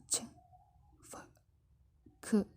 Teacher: Voiceless ini ketika kita mengucapkannya itu nggak ada getaran ketika kita mengucapkan konsonannya.